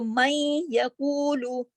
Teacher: تو میں یقولو، اب دیکھیے کہ میں میں کچھ غنہ، نون کچھ ناک میں چلا گیا اور ادغام بھی ہو گیا، کچھ غنہ بھی ہو رہا ہے